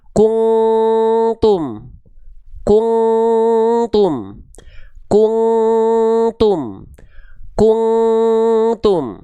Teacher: Suara yang masuk ke dalam rongga hidungnya sedikit, enggak semua, enggak full. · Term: menjauhi eng